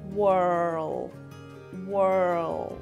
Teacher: you're using American pronunciation the r is rotic meaning the tongue is curved back and you roll the r in a sense so it sounds like Whirl Whirl the L in world is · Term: rhotic